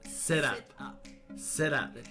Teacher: The T in sit connects smoothly with the U and up, making it sit up, sit up. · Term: merging